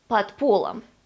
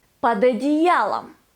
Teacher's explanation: D becomes t because the next word starts with a voiceless consonant p, под полом.